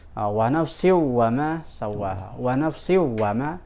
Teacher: di dalam qiraat Hamzah itu tidak ada idgham bi gunnah, adanya idgham kamil. Langsung dibacanya langsung begitu seperti izhar saja.